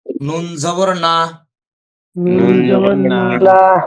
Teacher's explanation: শেষে নুনের সাথে যে জবরটা আছে এটাতে কিন্তু টান হবে না, যেহেতু হরকত উচ্চারণ তাড়াতাড়ি।